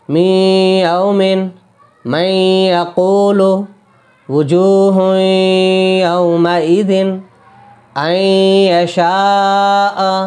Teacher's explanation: اسی طرح می یومن، میم کو یا تشدید ہے یہاں پہ، لیکن نون ساکن کے بعد یا رہا ادغام یا، تو اسے ڈائریکٹ ہم اس میں ہی ملا کے پڑھیں گے۔ اگر یہاں تشدید نہ بھی ہوتی تو بھی ہم ملا کے پڑھتے اور غنہ بھی کرتے